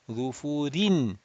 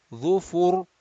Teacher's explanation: This kasratain disappears, and the dhamma before the ra sakin is going to make this ra sakin mufakham, rounded.